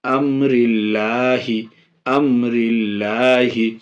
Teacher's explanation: لفظ اللہ کے لام سے پہلے را میں زیر ہے اس لیے لفظ اللہ کے لام کو باریک پڑھیں گے یعنی ہلکا پڑھیں گے